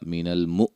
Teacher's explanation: حمزہ کو جھٹکے سے